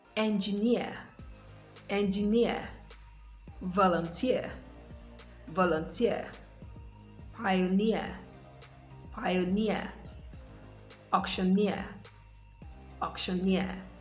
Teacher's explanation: the stress is usually placed on the last syllable of words that end in EER